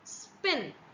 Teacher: there is no expulsion of air that is taking place so that is unaspirated sound